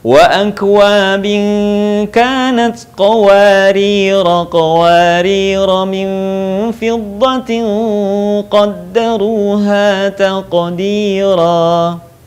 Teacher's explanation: Kalau berhenti, qawarir dipanjangkan, tetapi kalau dibaca nyambung dengan ayat berikutnya, maka kata qawarira dibaca pendek